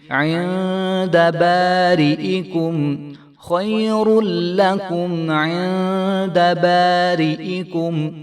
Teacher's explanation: خیر لکم عند اندہ نہیں کریں گے، اخفا کر کے پڑھیں گے اور عین کی آواز آنی چاہیے